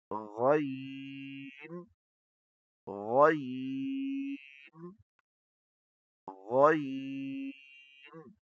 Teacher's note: یہ خا کی طرح اوپر والے گلے سے پڑھا جاتا ہے اور یہ نرمی سے مگر موٹا پڑھا جاتا ہے